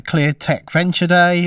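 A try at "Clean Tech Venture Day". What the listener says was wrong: Clean tech. You said clear.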